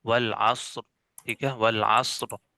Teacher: عین پر زبر آ رہی ہے تو اس را کو جو ہے موٹا پڑ جائے گا